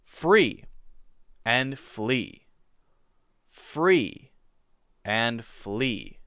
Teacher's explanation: when I make the R sound, I curl my tongue up and back. It's kind of straight up toward the roof of my mouth. And when I say the L sound, fl, I'm actually touching my tongue behind my teeth.